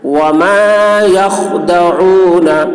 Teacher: خا کی آواز موٹی ہوگی، لیکن خا میں قلقلہ نہ ہونے پائے، یعنی آواز خا کی ٹکرائے گی نہیں